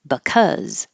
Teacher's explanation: the BE is very short because it's not stressed. And so you can think of it as the schwa, or not at all, just like a little b, because.